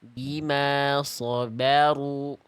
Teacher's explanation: Jadi ro dhammah ro fathah diangkat pangkal lidahnya tebal ya.